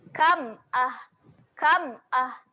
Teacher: Kam dekat sini pun dia adalah bacaan yang jelas. Jangan panjangkan bunyi huruf mim tu.